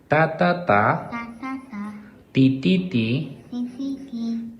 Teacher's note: en la T se le arranca mucho más el aire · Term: escape nasal